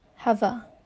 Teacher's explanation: the last sound of the first word, which is v, is combined with the first sound of the next word, which is schwa sound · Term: linking process